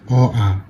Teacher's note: অ আ, এই দুটো উচ্চারণ হয় কণ্ঠ থেকে, এর জন্য এদেরকে বলা হয় কণ্ঠ ধ্বনি